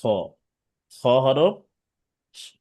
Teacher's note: কণ্ঠনালীর শেষ ভাগ থেকে খ হরফটা উচ্চারণ করতে হবে